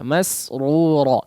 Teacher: Huruf sin ditipiskan ya sebagian ya, karena setelahnya huruf ra yang ditebalkan ya, maka sinnya ikut sedikit menebal, maka diperhatikan, pertahankan ketipisannya